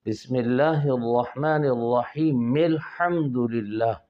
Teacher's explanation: بسم اللہ کی جو اللہ کا لام ہے اس کو ہم نے باریک پڑھنا ہے، اس لیے کہ اس اللہ کے لام سے پہلے بسمی کی میم کے نیچے زیر ہے، یعنی کسرہ ہے، میم مکسور ہے، اس لیے اللہ کا لام بھی باریک پڑھنا ہے، اور اس میں جو کھڑی زبر میں الف مدہ ہے اس کو بھی باریک پڑھنا ہے۔